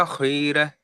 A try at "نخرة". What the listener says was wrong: அது அந்த குன்னன்றது போதாது. குன்ன ஐதோமன் பாருங்கோ. லாவை நீட்டினீங்க தானே, அந்த அளவுக்கு நாவை நீட்டணும், அதே அளவுக்கு லாவை நீட்டணும். இந்த மூணு நீட்டப்பட வேண்டியது. இல்ல குன்ன குன்ன என்றது போதாது. குன்ன ஐதோமன்.